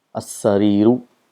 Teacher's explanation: See what is so special about this lam of al. This lam becomes silent when certain letters comes after it.